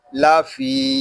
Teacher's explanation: فا کو ہم ایک الف تک کھینچ کر پڑھیں گے کیونکہ یہاں یا مدہ ہو رہا ہے۔